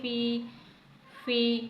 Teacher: سب سے پہلے فا یا زیر فی، فا یا زیر فی، یعنی یہاں پر حروف مدہ میں سے یائی مدہ موجود ہے، یعنی یا ساکن سے پہلے زیر آ رہا ہے تو یہ یائی ساکن ہو گیا، یائی مدہ ہو گیا، اسے ایک حرکت کے برابر یعنی تھوڑا سا کھینچ کر پڑھیں گے